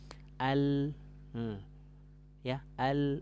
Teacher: Al ujung lidahnya kan naik jadi suaranya terhalang akhirnya suaranya ya keluar dari sisi kiri dan kanan lidah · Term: sifat al-inhiraf